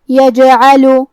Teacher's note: جیم بھی حروف القلقلہ میں سے ہے تو ہم یہ حرف کو ہلاتے ہوئے یہ کلمہ کو پڑھیں گے